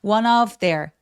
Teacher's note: 두 번째 다음 단어가 모음으로 시작하게 되면 바로 앞에 있었던 n 소리 이렇게 자음 소리를 받아요. 원의는 그냥 스펠링만 써 있지 실제로 발음하는 스펠링이 아니기 때문에 one of로 연음하게 됩니다.